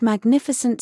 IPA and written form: mæɡˈnɪfɪsnt (Magnificent)